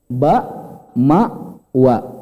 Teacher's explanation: Kalau BMW, ba, mim, wa itu 2 bibir.